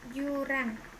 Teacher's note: Konsonan J, kriterianya bunyi laminopalatal paduan bersuara